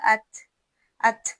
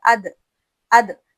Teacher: دال اور تو میں نہیں نکلتی، وہاں آواز واضح بس باہر نکل آتی ہے، لیکن تا میں ہلکی سانس کی آواز بھی آپ کو سنائی دے گی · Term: صفت ہمس